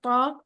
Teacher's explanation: त की तरह ही है लेकिन मोटा करके पढ़ा जा रहा है